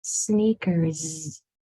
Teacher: So sneakers has E, Z, 6 sounds. That first S is making a different sound than the last S. S has 2 sounds, voiceless and voiced or vibrating. And it usually depends upon the sound that's right before it.